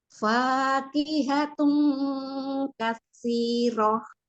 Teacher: Bukan tun, kan bukan makhraj huruf nun, huruf kaf. Jadi pakai eng. Terus dengung 3 harokat.